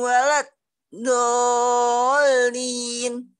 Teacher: Waladhdallin mad lazim 6 harokat.